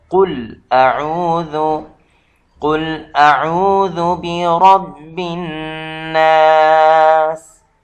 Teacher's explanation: قل یہاں قاف جو ہے یہ بھی تفخیم ہے، یعنی پر کر کے پڑھا جائے گا